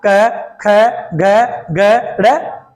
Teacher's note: के वर्ग जो है वह कंठ से बोला जाता है